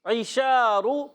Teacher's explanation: عین کے نیچے جو زیر ہے، عین باریک رہے گا، حلق کے درمیان والے حصے سے عین ادا ہوتا ہے۔